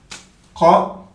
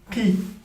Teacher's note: la langue, elle va venir toucher le palais mou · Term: Qaf